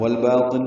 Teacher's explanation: والباطن میں اظہار قمری ہے، لام پڑھا جا رہا ہے. بالف مدہ ہے، دو حرکات لمبا ہے.